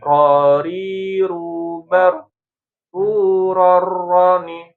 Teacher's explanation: Dia ada getaran dan enggak boleh enggak ada getaran. Tapi getarannya juga jangan terlalu banyak ya. terutama ketika dia bertasydid ya. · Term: takrir